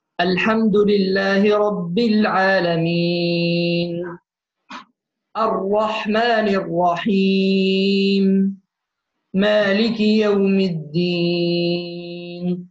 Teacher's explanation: يتولد عندنا مد طبيعي عند الوصل. طيب عند الوقف مد عرض للسكون